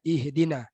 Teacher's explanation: Hamzah dan ha mutaqarib, berdekatan dari sudut makhraj dia. Hamzah pangkal leher, huruf ha pun pangkal leher, bersebelahan saja.